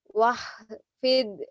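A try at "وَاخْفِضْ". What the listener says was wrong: Oh, salah lagi ho-nya. Wah, kho. Kotor.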